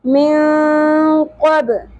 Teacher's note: نون ساکن کے بعد حروف اخفا میں سے قاف آ گیا, یہاں پر اخفا مع الغنہ ہوگا. من قبل, با ساکن پہ قلقلہ ہوگا.